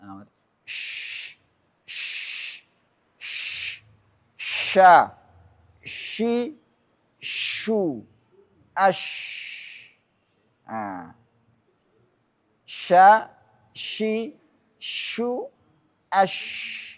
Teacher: pengucapan huruf yang disertai dengan menyebarnya angin di dalam mulut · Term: at-tafashi